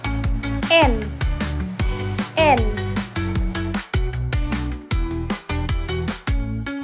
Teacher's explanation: Karena mulut tertutup, udara keluar melalui hidung. · Pita suara bergetar karena huruf N adalah konsonan bersuara atau voice. · Yang pertama yaitu posisi lidah. Ujung lidah menyentuh alveolar ridge atau gusi atas tepat di belakang gigi atas depan. Ini menghalangi aliran udara keluar dari mulut. · dihasilkan dengan getaran udara yang keluar melalui hidung atau nasal dan lidah menyentuh bagian alveolar atau gusi atas tepat di belakang gigi depan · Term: konsonan N